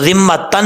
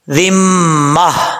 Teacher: وقف کرتے ہوئے تا کو ہا بنا دیں گے۔